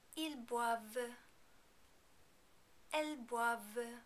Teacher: In the il and elle plural form, we do not pronounce the final NT because there isn't a vowel after it.